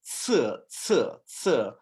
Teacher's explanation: Okay, so you have ci, and that S is actually pronounced like a TS